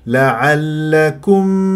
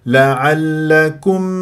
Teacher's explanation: ولا تسحب ضمه الكاف الى الميم